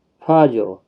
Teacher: را جب ساکن ہوگا تو پر ہوگا، فاجر، کیونکہ جیم ساکن سے پہلے والے حرف کے اوپر زبر ہے، اس لیے پر پڑھا جائے گا۔